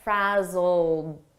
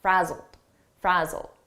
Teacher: Frazzled, here it's a past simple ed verb, but the pronunciation is a very soft D, and you almost don't hear it.